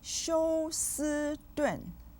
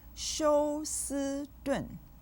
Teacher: 休 with the 1st tone, 斯 with the 1st tone, and 顿 with the 4th tone